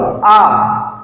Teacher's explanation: विवृत मतलब होगा ओपन, खुला हुआ, आ खोल दिया मुंह, ठीक है, उसमें आ बड़ा आ जाएगा, तो ये विवृत है, मुंह खुलना है, फैल रहा है, यानी कि ओपन हो रहा है, आ विवृत